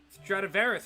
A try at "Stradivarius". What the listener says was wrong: You got everything except for the last I. You said Stradivarius, it's Stradivarius.